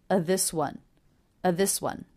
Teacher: so the word of is simply pronounced a